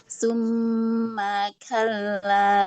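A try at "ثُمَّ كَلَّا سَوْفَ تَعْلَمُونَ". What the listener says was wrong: ma-nya hati nggak panjang. Yang ditahan gunnahnya. Pas ma jangan panjang.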